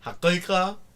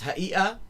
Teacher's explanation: the sound just becomes a sort of a glottal stop